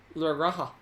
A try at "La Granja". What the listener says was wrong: No, Granja. You gotta add an N.